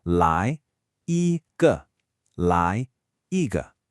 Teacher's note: Here we have a rising second tone, a high flat first tone, and then that tricky neutral tone.